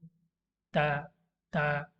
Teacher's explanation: ता, ता जो है उसको अदा करने के लिए आपको आपकी जो ज़ुबान की नोक है उसको ऊपर सटाते हैं, यहाँ पे इस वाले हिस्से में, यहाँ पे।